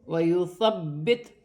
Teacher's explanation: با مشدد ہے، جماؤں کے ساتھ ادا کیا جائے گا